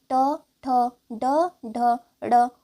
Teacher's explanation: ट वर्ग के सभी व्यंजन मूर्धन्य कहलाते हैं